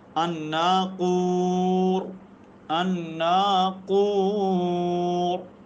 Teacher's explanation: را ساکن ہے، ما قبل واو ساکن ہے، اس کے ما قبل کاف کے اوپر پیش آ گئی ہے تو یہ را کیا پڑ جائے گی؟ پر پڑی جائے گی.